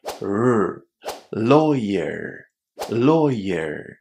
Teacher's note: The only thing you have to remember here is not to pronounce the letter R as R with your tongue hitting the roof of your mouth. The English R sound is different because your tongue curls back and it doesn't touch the roof of your mouth.